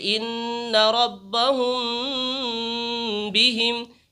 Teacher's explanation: اخفاء شفوی یعنی میم ساکن کے بعد با آئے تو غنہ کے ساتھ اخفاء ہوگا